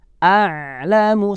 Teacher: saat disukun maka ada suara pertengahan yang tidak ditekan ataupun dilepas banyak, yang harus dikeluarkan saat ain itu dimatikan. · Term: huruf ain